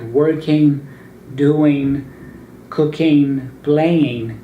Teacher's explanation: you don't pronounce the G at the end of those words